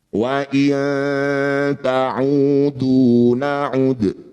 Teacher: dal sukun di akhir bacaan disebut qalqalah kubro ya pantulannya pantulan huruf dal ini betul-betul diperjelas